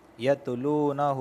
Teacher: یتلو واو ساکن سے پہلے پیش آیا ہے، اس وجہ سے میں اسے واو مدہ کی وجہ سے کھینچ رہا ہوں